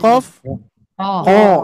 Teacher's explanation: khusus huruf th dan huruf qof ketika dipantulkan pantulannya tebal